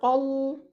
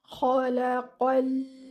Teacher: After you read your qaf, while joining your qaf with the lam, your lam should still stay light. Don't make it heavy because of the qaf. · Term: lam is a light letter